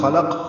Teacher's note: اور لام باریک ہے، اور قاف پھر پر ہے، اور قاف پہ قلقلہ ہے